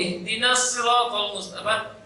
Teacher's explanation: Bertemunya dua sukun, tapi tidak dalam satu kata. Maka dibaca tidak panjang sama sekali.